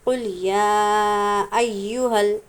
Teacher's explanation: جب ایہا پڑھیں گے تو یا کو سختی کے ساتھ ادا کریں گے